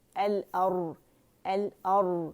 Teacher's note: اور نہیں کریں گے، حمزہ موٹا نہیں کریں گے، باریکی سے ادا ہوگا